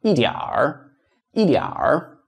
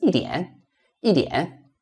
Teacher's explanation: In the southern part of China, you may not hear it, but in the northern part of China, especially in Beijing, you're going to hear the R. Roll your tongue. · in the southern part of China, you can speak without the R, just 一点, 一点.